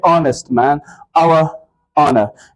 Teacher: यहाँ पे H silent है और एच के बाद जो साउंड है वो वॉवेल साउंड है